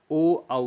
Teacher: ओ औ का जो उच्चारण स्थान है वह कंठ और ओष्ठ है, तो इसलिए इनको कंठोष्ठ कहा जाता है।